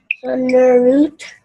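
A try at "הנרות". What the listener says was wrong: Hanerot. Because the line with the dot over it goes O, okay?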